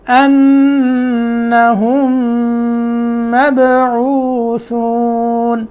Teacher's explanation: میم کو میم میں ادغام کر دیں گے، ادغام کرنے کی وجہ سے غنہ پیدا ہوگا اور ایک میم کی آواز آئے گی، ٹھیک ہے، اور یہاں جو ہے ادغام ہوگا غنے کے ساتھ، ایک میم کی آواز آئے گی، یہاں دیر لگائیں گے.